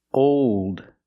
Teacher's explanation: we hear how the sound changes how the vowel changes before the dark L